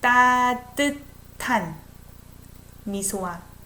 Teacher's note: I pronounce it as if it's T. S and H together sounds like T.